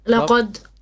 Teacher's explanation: dal is going to be flat with qalqala.